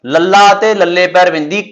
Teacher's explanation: ਪਾਸੇਦਾਰ ਇਹਨਾਂ ਨੂੰ ਕਿਉਂ ਕਹਿੰਦੇ ਹੈਗੇ ਕਿ ਇਹਨਾਂ ਵਿਅੰਜਨ ਨੂੰ ਉਚਾਰਨ ਦੇ ਵਕਤ ਜਦੋਂ ਜੀਭ ਖੜੀ ਹੁੰਦੀ ਹੈ ਸਿੱਧੀ ਖੜੀ ਹੁੰਦੀ ਹੈ ਤਾਲੂਏ ਵੱਲ ਤਾਂ ਸਾਂਹ ਦੀ ਹਵਾ ਜੀਭ ਦੇ ਦੋਨਾਂ ਪਾਸਿਆਂ ਦੀ ਲੰਘ ਜਾਂਦੀ ਹੈ। ਇਸ ਕਰਕੇ ਇਹ ਪਾਸੇਦਾਰ ਵਿਅੰਜਨ ਕਹਾਉਂਦੇ ਨੇ।